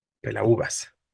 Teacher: La tónica es la U, por lo tanto se forma un hiato. Es el hiato que me obliga a acentuar.